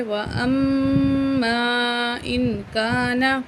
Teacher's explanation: میم زبر الف مد ما چار الف کے برابر کھینچ کے پڑھیں گے